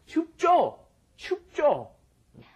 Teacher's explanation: Normally when Koreans say it, it's kind of a hard J